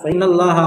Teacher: फ़इन्नल्लाह में नून के ऊपर तशदीद, इसलिए आपको गुन्ना करना।